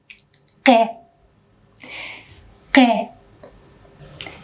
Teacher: Q is a voiceless pre-uvular or uvular plosive sound.